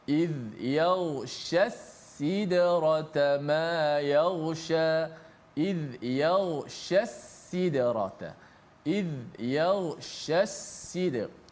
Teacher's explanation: Daripada shin tengah lidah, sya, kemudian kita ingat sin tu yang berbaris di bawah itu berada di hujung lidah.